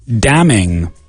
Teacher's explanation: And again, the N is silent. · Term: the silent N